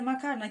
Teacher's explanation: Bakın arkadaşlar, bütün hecelerde a, kalın ünlü olan a var. Kalınla başlamış, kalınla devam etmiş.